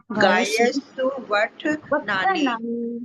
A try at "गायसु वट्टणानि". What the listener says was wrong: गायस आधा से को पूरा से बोलेंगे।